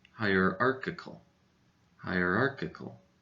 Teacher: this dress for this word goes in the middle syllable arc so arc is a little bit louder than the rest of the syllables